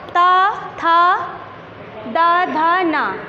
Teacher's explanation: ता वर्ग टा, ता, था, द, ध, न ये दंत। इनको उच्चारित करने में हमारी जीभ जो है वो हमारे दांतों का स्पर्श करती है